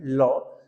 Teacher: जब हम लौ का उच्चारण करते हैं, लौ, तो जीभ आगे तालु के साथ मिलकर के लॉक हो जाती है, तो हवा निकलती है जीभ के पिछले हिस्सों से, इसलिए इसको बोलते हैं पार्श्विक व्यंजन।